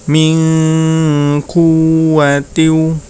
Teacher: di situ ada nun sukun bertemu dengan huruf qaf, yaitu bacaan ikhfa, maka cara membacanya nun sukunnya dibaca samar ya